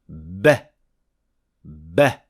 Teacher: ba is produced after you have accumulated some air behind the lips, and then suddenly opening these lips, releasing the air and producing the sound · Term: plosive